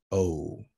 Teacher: We have our diphthong, which is a mid back vowel. Again, mid, they are talking about height.